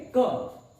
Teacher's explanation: ऐसे बोलेंगे क, एक झटके में हमारी श्वास बाहर आ रही है, लेकिन क, ये क बोलने के दौरान हम देखते हैं कि आखिरी क्रम में अ का उच्चारण होता है